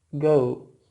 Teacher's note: in the early 20th century British speakers began to pronounce this diphthong as go, with a more centralized pronunciation. And this is because it's easy for the tongue to articulate two sounds with a similar point of articulation.